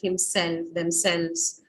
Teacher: your stress is going to fall on the second part